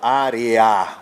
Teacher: Esse EA aqui é um ditongo crescente, na verdade, né? De semivogal para vogal. Área. O A aqui é mais forte, o A é a vogal.